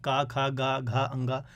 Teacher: इनका मतलब क्या है, का वर्ग जो है, इनको बोलने में जो आपकी वायु निकलती है वो कंठ से निकलती है। आप यदि बोलेंगे का, खा, गा, घा, अंगा, है ना। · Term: कंठव्य